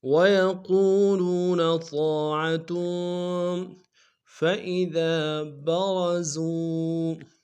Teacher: فَإِذَا میں ذال کے ساتھ الف مدہ ایک الف میں کھینچیں گے، را کو موٹا کر دیں گے، زا کو واو کے سامنے لائیں گے، واو مدہ ایک الف میں کھینچیں گے۔